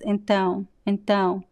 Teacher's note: the last o sound is very weak it almost disappears